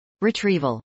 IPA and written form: rɪtrˈivəl (retrieval)